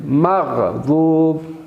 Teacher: غین کو آپ نے ابتدائی حلق سے ادا کرنا ہے